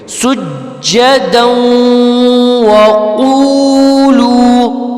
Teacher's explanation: جیم پہ تشدید آ گئی ہے، تو اس کو ہم جھٹکا دے کے پڑھیں گے. ٹھیک ہے، پھر دال پہ جو ہے دو زبر دن ہے، پھر واو آ گئی، واو پہ بھی تشدید ہے، تو یہ ایک ہی لفظ ہم جوڑ کے اس کو پڑھیں گے.